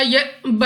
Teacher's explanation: حمزہ ساکن جھٹکا دے کر پڑھنا ہے